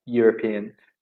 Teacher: So usually we write a European city, not an. Because even though it starts with an E, so you're right, it's a vowel, the sound when we hear it is yeah. So it sounds like a consonant, a Y.